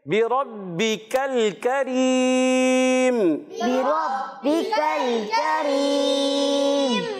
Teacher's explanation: کاف کو باریک رکھنا ہے، لام کو ہلانا نہیں، پھر دوبارہ کاف آیا اس کو بھی باریک رکھنا ہے، اور آخر میں مد عارض ہو جائے گا۔